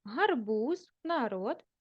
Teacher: в українській мові дзвінкі приголосні звуки в кінці слова вимовляються дзвінко виразно чітко